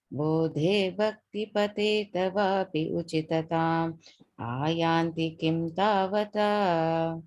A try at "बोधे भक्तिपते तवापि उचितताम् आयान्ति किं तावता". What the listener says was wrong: The pause again after bhakti pateta vapi, and then a pause. Yeah, I think you're pausing after uchitatam.